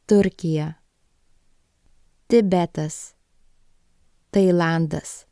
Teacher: it is pronounced as a dental sound the tongue touching the back of the front teeth for English speakers remember that this sound isn't aspirated so there · remember that this sound isn't aspirated so there is no noticeable puff of air coming out